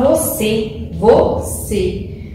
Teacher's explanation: a sílaba tônica que tem mais força é a última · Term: oxítona